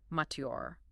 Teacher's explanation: This one demands entirely different consonant blending. In British RP, the T remains crisp and distinct, followed immediately by a Y glide, and the final R is, of course, dropped. Mature. >> General American forces the T and the Y to collide, fusing them into a ch africate, and finishes with a hard bunch tongue R.